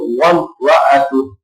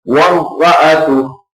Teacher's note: وامرأ میں میم پر گنہ نہیں کرنا کیونکہ یہاں پر اظہار شفوی ہو رہا ہے